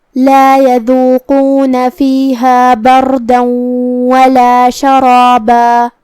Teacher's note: قاف کی ادائیگی زبان کی جڑ اور تالو کے نرم حصے سے ہے · ہمیں دال کو زبان کے سر اور اوپر والے دانتوں کے اندرونی کناروں سے ادا کرنا ہے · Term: حرف القاف, حرف الدال